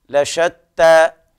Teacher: هنا بيان التفشي في الشين